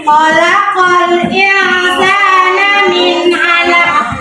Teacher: Hukum bacaan kol-kola apa? Kubro. Nah, memantulnya lebih kuat.